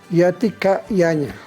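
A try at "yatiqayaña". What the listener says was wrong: Yatecayaña. Vamos a pronunciar bien la K, porque hay es como una bolsita de aire, es glotal. Yatecaña. No es caña, no es duro, no es con el apóstrofe, sino es más glotal. Yatecaña, ¿no? Yatecayaña.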